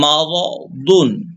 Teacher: মিম জবর মা, র জবর র, মা র, দ দুই পেশ দুন, ঠোঁট গোল হবে। মা র দুন, হ্যাঁ চাপ দিতে হবে।